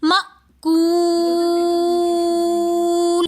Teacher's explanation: مأکول میں واو مدہ ہونے کی وجہ سے ہم نے اس کو ایک الف کی مقدار کھینچ کر پڑھا · آگے حمزہ ساکن آ رہا ہے تو اس حمزہ کو ہم جھٹکے سے پڑھیں گے